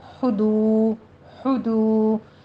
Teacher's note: دو واو مدہ ہے، 2 کاؤنٹ کرنے ہیں